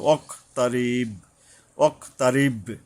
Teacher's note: বড় কফের উপরে সাবধানে হয়ে উচ্চারণ এবং কলকলা মানে প্রতিধ্বনিত হবে, অক তারিব, অক তারিব।